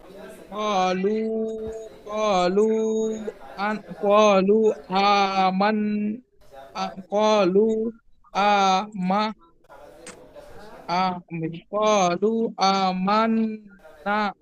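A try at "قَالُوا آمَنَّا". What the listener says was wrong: টানগুলো একটু দিতে হবে। কলু আমান্না।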